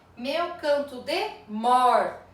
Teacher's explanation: Qual é a sílaba tônica da última palavra aqui? A sílaba tônica da última palavra é mor